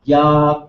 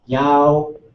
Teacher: if there was a W at the end, I was rounding a little bit too soon. So instead of Ya, I would say Yao.